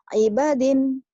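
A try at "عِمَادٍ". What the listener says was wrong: Imadin bukan ibadin. Mim.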